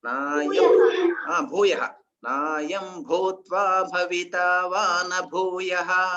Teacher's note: బాకు మహాప్రాణం కదా, ఆ మహాప్రాణం కొంచెం స్ట్రెస్ చేయాలి అక్కడ